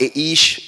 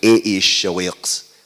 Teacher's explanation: It sounds wrong. It has to be ish aḥʔic because aḥʔic always makes the first vowel long.